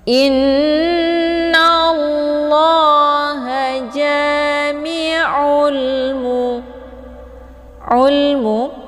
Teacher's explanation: Karena sesudah alif lam terdapat huruf qamariyah yaitu mim. Cara bacanya, alif lamnya dibunyikan secara jelas atau jelas bunyi L-nya. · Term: alif lam al-qamariyah